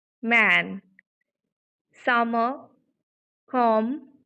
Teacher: Our vocal folds are vibrating, and that's why it is voiced consonant.